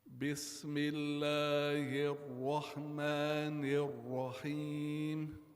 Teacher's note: I'm saying the ra with a dhamma, and it's supposed to be a fatha.